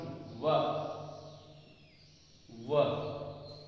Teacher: इसके बाद में दंतोष्ठ, दांत, दंत और ओष्ठ, इन दोनों से संयुक्त रूप से जिसका उच्चारण होता है वह है वकारस्य दंतोष्टम, वकारस्य दंतोष्टम, व व, इसमें दंत और ओष्ठ दोनों की सहायता ली जाती है व का उच्चारण करने के लिए